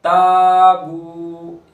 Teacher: ताबू, यहाँ अलिफ मद्दा हो रहा है और वाव मद्दा हो रहा है, दोनों को खींचेंगे। अलिफ को बारीक करेंगे, अलिफ से पहले बारीक हर्फ है